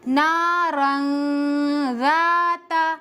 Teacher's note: نون کی آواز کو ناک میں چھپا کر پڑھیں گے · नून की आवाज को नाक में छुपाकर पढ़ेंगे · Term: اخفاء